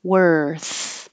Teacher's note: Tongue's curled back for the R. Forward for the TH and keep air flowing the whole time